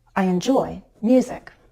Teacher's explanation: when we have two or more syllables to work with as in music our voice can step down